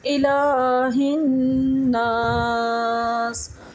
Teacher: آج ہم اس صورت میں قاعدہ پڑھیں گے، غنہ کا، غنہ کا مطلب ہے، غنہ کا مطلب ہوتا ہے کہ ہم نون کی اور میم کی آواز کو ناک میں لے کر جاتے ہیں